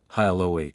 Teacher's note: The H is soft, and the stress is on the second part of the word.